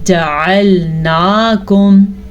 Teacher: عین کے مخرج کو واضح کر کے پڑھنا ہے. اگر عین کو ہم واضح نہیں کرتے تو حمزہ بن جاتا ہے